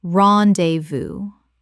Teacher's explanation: Three syllables with the S completely silent.